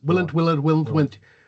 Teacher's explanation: The other one is, which goes on to that, is that in effect the L, which it may not be as difficult to pronounce, but the L basically disappears